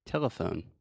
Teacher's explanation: so the schwa is the middle syllable